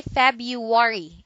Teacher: we don't like two syllables in a succession with an R so some of us dump the first one in this word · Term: single or pronunciation